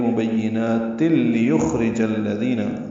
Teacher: تنوین کے بعد لام آنے کی وجہ سے ادغام ہے، یہ ادغام کامل ہے، تا لام سے ملا دیں گے · لام کو جلدی پڑھیں گے، یا کو خا سے ملائیں گے، خا پر پڑھیں گے، اس پہ ہمس ہوگا. را باریک پڑھیں گے. جیم کو الذین کے لام سے ملانا ہے.